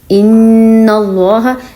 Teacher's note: ان کہتے ہوئے آواز جو ناک پہ گئی ہے اور زبان اوپر تالو کے ساتھ لگ رہی ہے. ایک ہوتا ہے یہ اس طرح کا غنہ.